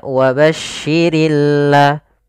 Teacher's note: pada lafal Al di sini ada bacaan alif lam syamsiah yaitu alif lam yang kita tulis tapi dia tidak terbaca dia sehingga langsung kepada huruf lam yang bertasdid